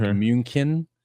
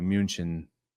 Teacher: Some people use like hard CH sounds. So like München, but other people soften it to München.